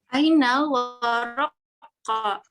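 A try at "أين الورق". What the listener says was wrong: Waroku. Ainal waroku. Pakai dhammah.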